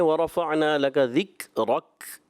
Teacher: थोड़ा सा काफ जो है आखिर में वरफ़अना लका ज़िक्रक, रा तो पुर होगा मगर काफ को आपने बारीक रखना